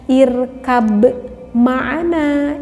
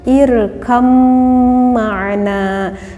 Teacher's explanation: Dimasukkan huruf yang apa? Dimasukkan huruf yang ba ini kepada huruf yang mim, sehingga ba-nya tidak nampak terdengar oleh kita walaupun di dalam tulisannya ada ba ya, tetapi karena ini diidghamkan kepada huruf mim sehingga ba-nya tidak nampak. · ba-nya walaupun ini huruf ba itu huruf qalqalah, tetapi kita tidak boleh mengkolkolahkannya